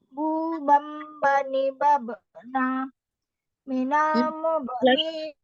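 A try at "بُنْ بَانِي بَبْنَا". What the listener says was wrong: Ulangi untuk kol-kolahnya langsung ya. Bu bam bani babena gitu ya. Bu bam bani babena. Panjangkan sedikit gunnahnya lagi.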